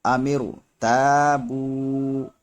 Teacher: را ساکن سے پہلے زیر دوسرے کلمے میں ہے اس لیے را موٹا ہوگا